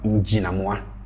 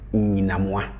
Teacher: the n would cause the j to change into ny. So we end up with nyinamwa. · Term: assimilation